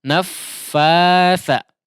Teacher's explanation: Nah, ada dua tasydid ya, tapi yang kedua adalah huruf fa ya, di tasydid yang kedua huruf fa, kemudian setelahnya ya, di situ adalah huruf fa ya, atau fa yang dimadkan kemudian bertemu dengan huruf tha. Jangan di situ ditasydidkan juga, tapi dipanjangkan fa-nya baru masuk ke tha ya.